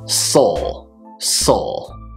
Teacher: it's a weird one because we don't really have a proper vowel in there it's just the S sound followed by a dark oh no my cat is shaking my